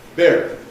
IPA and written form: bɪr (beer)